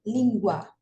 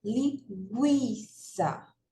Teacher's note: perceba que o u a gente pronuncia mais fraco e o a a gente pronuncia com mais força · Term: ditongo crescente